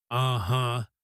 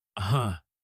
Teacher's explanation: Now, uh-huh is probably the most common agreement sound in the English language, and I call it a sound rather than a word, because it is not really a proper word. It is just a sound that you make with your voice, and it usually goes up at the end like this. Uh-huh.